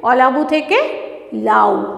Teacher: এই অলাবু কথাটা থেকে প্রথম অংশ যেটা অটা সেটা উঠে গেছে মানে বিলুপ্ত হয়েছে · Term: আদি স্বরধ্বনি লোভ